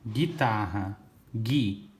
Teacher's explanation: Eu não ouço o som do U, ó. Não falo gu.